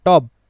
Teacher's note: আমি বলছি ট ট এর সাথে অটা উচ্চারণ হচ্ছে। কিন্তু ব এর সাথে যে উচ্চারণটা অ এর সেটা আমি করছি না। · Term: হসন্ত